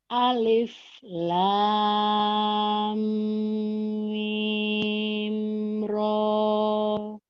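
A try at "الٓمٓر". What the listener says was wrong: iya, kurang cuman mimnya kurang kurang panjangnya sedikit.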